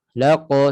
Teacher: lidah sentuh pada lelangit lembut berdekatan dengan anak tekak. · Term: qaf